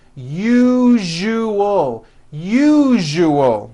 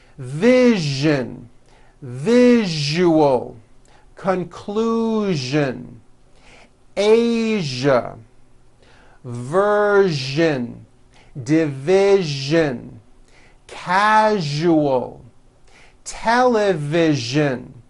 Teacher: that second syllable jus the one with the underline needs to be voiced put your hand on your throat and feel for the vibration